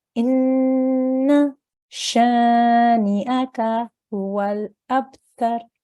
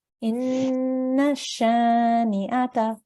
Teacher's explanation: You have to hold on that and make a nasal sound for 2 seconds on the noon. You don't elongate afterwards with the fatha, but you hold on the noon. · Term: noon gunna